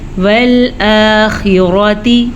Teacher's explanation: را کے اوپر زبر ہے تو را زبر کی وجہ سے پر پڑھی جائے گی۔